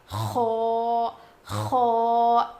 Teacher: اس میں تھوڑی سی گاگلنگ ساؤنڈ آئے گا، یعنی کھردری آواز آئے گی، زیادہ نہیں تھوڑی سی.